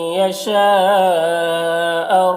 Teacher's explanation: یشا میں مد متصل ہے اسے 3 4 الف کو برابر کھینچیں گے